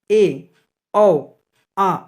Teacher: उच्चारण में मुख्य द्वार आधा खुलता है